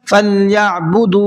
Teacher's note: दाल के साथ में वाव मद्दा लगा हुआ है इसलिए दाल को खींच करके पढ़ेंगे